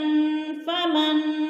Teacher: ادھر اخفا کریں گے، ناک میں آواز لے جائیں گے